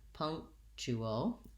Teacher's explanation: it has first syllable stress so the pung syllable is long · We have a little KT sound in there, but we make a stopped K, and so we're not really saying punctual.